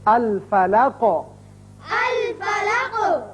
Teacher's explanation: قاف حروف مستعلیہ میں سے ہے اور حروف قلقلہ میں سے بھی ہے، جب اس پر وقف کریں گے قاف ساکن ہوگا تو اس کی صفت قلقلہ ادا ہوگی، الفلق۔ الفلق۔